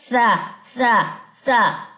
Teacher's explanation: زبان کی نوک جب ثنایا اولیا کے کناروں سے لگے اور کناروں سے لگتے ہی ہم اس کی سیٹی جو ہے وہ ختم کر دیتے ہیں